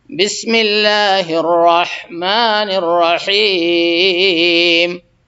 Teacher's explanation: بڑی ہا، جو کہ درمیانی حلق سے اور وسط حلق سے ادا ہوتی ہے